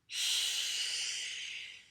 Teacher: If you put your hand in front of your mouth and you said, shh, it's not a lot of air, but it's continuous.